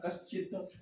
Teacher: उसी तरह से कह जोड़ चित्त, यहाँ पर भी देख रहे हैं च वर्ग का पहला वर्ण है तो विसर्ग का संयोग च से हो रहा है, इसलिए यहाँ पर आधा तालव्य स्वर आ गया